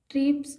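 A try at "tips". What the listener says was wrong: टिप्स, देखिए इन्होंने पढ़ा टिप्स, टिप्स नहीं है, ट्रिप्स। आर है क्या उसमें? आर ट्रिप्स आपने पढ़ा।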